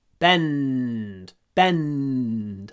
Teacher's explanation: when we have ND in English we hold the N